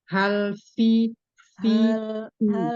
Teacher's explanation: ha, fa, kemudian fi di sini sama-sama mempunyai sifat hamas dan rofa, mengalir suara, mengalir udara.